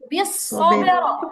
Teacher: সবের প্রথমে বাই কলকলা হবে, তারপরে র মোটা হবে।